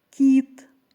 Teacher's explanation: звук і пом'ягшує попередній приголосний